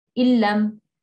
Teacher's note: there's tashdid, a hardening, but there's no ghunna.